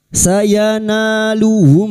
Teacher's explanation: Sayanauhum mim sukun bertemu gin idhar syafawi. Mim sukun dibaca jelas tanpa mendengung.